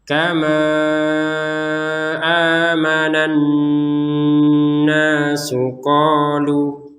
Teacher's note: nun bertasydid dibaca dengan dengungan